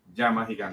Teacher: It's a double L. In Spanish, double L sounds like a Y.